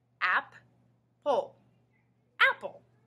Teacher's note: Notice how when we say the word all together, we just hear one sound for P.